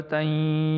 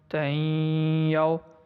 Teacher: تا یا 2 زبر تئیں، یا وا زبر یو، تئیں یو۔ اب یہاں پہ ناک کے اندر میں آواز لے کے گیا ہوں تئیں جب پڑھ رہا ہوں، تو اس کا مطلب ہے میں یہاں پہ غنہ کر رہا ہوں